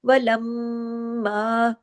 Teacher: میم پہ تشدید ہے، غنہ ہو رہا ہے